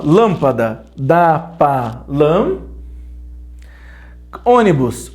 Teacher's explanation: a sílaba tônica é a antepenúltima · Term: proparoxítonas